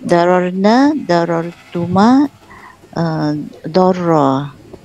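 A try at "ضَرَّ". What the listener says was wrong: Dorro panjang.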